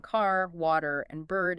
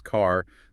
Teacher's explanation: American English, broadly speaking, is rhotic. The R in car, water, and bird is clearly articulated.